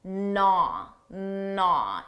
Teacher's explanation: First of all, notice that silent G